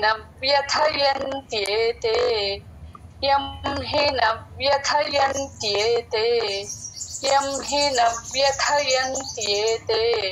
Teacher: న తర్వాత వ్య చెప్పినప్పుడు కొంచెం నొక్కినట్లు చెప్పాలి అలాగే వ్య తర్వాత థ ఒత్తు థ